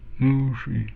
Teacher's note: we have a long U, retroflex S